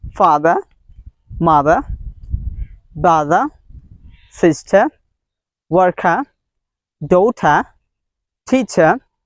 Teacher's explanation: the British people don't sound R. They don't make the sound R. They all time drop the sound R.